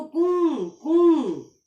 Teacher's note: नाक में से भी आवाज आ रही है और गले में से भी आ रही है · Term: चंद्र बिंदु